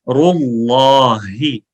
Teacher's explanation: اللہ کے لام کو موٹی آواز میں پڑھا جاتا ہے، فل آواز میں.